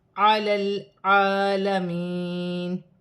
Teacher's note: لام ساکن کو لام کی حرکت کے ساتھ ملا کر پڑھا جائے گا